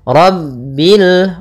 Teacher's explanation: rabbil rnya tebal ro tafkhim rabbil alamin hatihati jangan sampai memantulkan lamnya dengan rabbilamin karena di